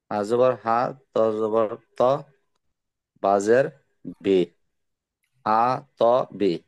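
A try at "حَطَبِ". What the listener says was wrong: প্রত্যেকটা টান হয়ে গেছে যে হা, ত, বি, হ্যাঁ, ত, বি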